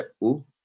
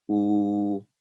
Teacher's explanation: یہ ہے دمہ اشبائیہ الٹی پیش کی مثالیں. الف یہ عام پیش ہے او، یہ ہے دمہ اشبائیہ الٹی پیش او، تو یہ آواز 2 سیکنڈ آواز لمبی ہوئی